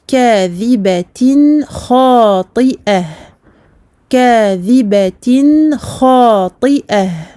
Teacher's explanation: Le kha, qui est une lettre de la gorge, une lettre halqiyya, ce qui fait que ici on a affaire à un idhar, donc la clarification. Nous allons prononcer tout à fait clairement, tout à fait normalement, le noun ici du tanwin.